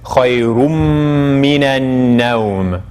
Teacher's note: It's originally khayrun, but then the noon gets absorbed into the meme, so the way we pronounce it is khayrum minan nawm.